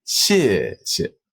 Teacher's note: So that's a fourth tone and a fifth tone.